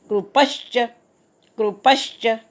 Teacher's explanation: कृपच्या पवर आघात येईल, पुढे च आला आहे